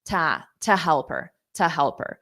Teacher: to is a preposition, and it's going to sound like a soft t, just a reduced sound.